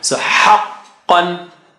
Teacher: qa is high sounding, so you got to take it high.